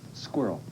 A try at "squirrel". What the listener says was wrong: You said squirrel. There's no W in it.